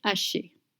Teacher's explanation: You don't pronounce the H in French, it's mute.